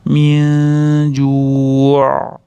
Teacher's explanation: aynda taqalib hamza borga o'xshatib qo'ymasdan ozgina ichkariroqdan aytib to'xtash kerak.